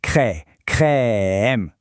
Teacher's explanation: C'est ce qu'on appelle une voyelle ouverte, c'est-à-dire que la bouche est un peu plus ouverte que pour d'autres sons.